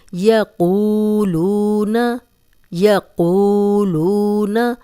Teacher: تفورو یقولون یا، اب دیکھیں یہ لمبا نہیں ہو رہا اس لیے کہ یہاں پہ زبر ہے، آگے واو مدہ ہے، جزم والی واو پیچھے قوف پہ پیش، جزم والی واو پیچھے لام پہ پیش، دونوں واو مدہ ہیں اور سیم مقدار میں ہم انہیں لمبا کریں گے اور قوف کو موٹا بھی پڑھیں گے